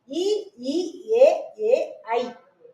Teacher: அதே மாதிரி இ இ ஏ ஏ ஐ ஆகிய 5ம், ஈக்கு அப்புறம் ஈல இருந்து ஒரு ஐ வரைக்கும் ஸ்டார்ட் முடிஞ்சு என்ன பண்ணுதுன்னா வாய் திறக்கும் முயற்சியுடன் நாக்கின் அடி ஓரமானது மேல்வாய் பல்லை பொருந்தும் முயற்சியால் பிறக்குது